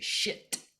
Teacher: We're not aware that we're doing it, but if we're really angry and we say shit, right? We're doing an ejective T.